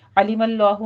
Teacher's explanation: علیم اللہ میں لفظ جلالہ کو پر پڑھنا ہے